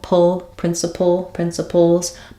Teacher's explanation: There may be a little bit of a schwa sound between the p and the ul, pull, principles, but I'm going as quickly as I can from p to ul, that dark L or that syllabic L at the end.